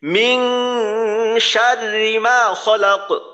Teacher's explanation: র উচ্চারণ করার সময় যেন র এর উচ্চারণটা একবারে হয়, বারংবার না হয়। অর্থাৎ যেমন ধরেন শার রি, রজের রি, তো এটা যদি এইভাবে বলি রি, র, র উচ্চারণ করার সময় জিহ্বার আগাটা যদি উপরের তালুর সাথে বারংবার লাগাই তাহলে এই ধরনের একটা আওয়াজ হবে রর।